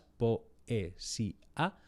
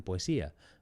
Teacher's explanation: En España pronunciamos poesía con 4 sílabas, poesía, pero se puede pronunciar con 3